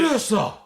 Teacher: It's kind of airy. He's kind of breathy, right?